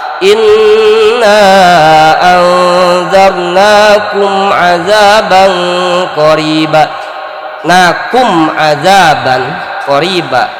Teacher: Mim mati ketemu ain idhar syafawi. Mimnya tidak boleh ada guna, tidak boleh terjadi guna, karena di situ idhar syafawi.